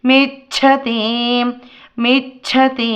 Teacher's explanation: మేచ్చతి చాసైలంటే మహాప్రాణమం చా పలుకుతామండి